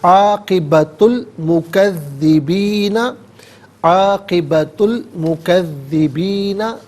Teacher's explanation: عاقبت میں تا پر پیش ہے، اس سے المکذبین کے لام ساکن کے ساتھ ملائیں گے، درمیان میں سے الف یعنی حمزہ کو حذف کیا جائے گا